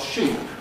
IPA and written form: ʃiːp (sheep)